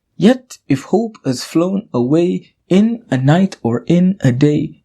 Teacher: In this iambic tetrameter, the first unstressed syllable is missing from each line, making the lines catalectic.